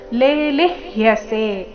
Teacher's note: ಮೊದಲನೇ ಅಕ್ಷರ ದೀರ್ಘ ಇದೆ ಲೇ, ಎರಡನೇದು ರಸ್ವ ಲಿ, ಮುಂದೆ ಅರ್ಧ ಪೂರ್ತಿ ಯ ಸೇರಿ ಸಂಯುಕ್ತ ಅಕ್ಷರ.